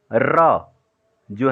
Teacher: जीभ तालू के ऊपर घूमती है, और इसी तरह 'रा' का उच्चारण किया जाता है। इसीलिए इसे ट्रिल्ड व्यंजन के रूप में वर्गीकृत किया गया है।